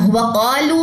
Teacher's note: واؤ کو ہم نے لمبا نہیں کرنا کیونکہ واؤ کے پاس جو ہے وہ زبر موجود ہے